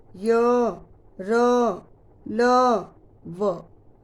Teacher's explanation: य और व में तो बिल्कुल भी जो है वो टच नहीं करती है जीभ हमारे मुख के किसी भी भाग को, और र और ल में हल्का सा टच करती है। ठीक है, तो ये मुख को पूरी तरह से नहीं छूती है जीभ, तो इन्हें हम बोलते हैं अंतस्थ व्यंजन।